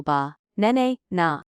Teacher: the stress is on the second syllable ba na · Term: stressed syllables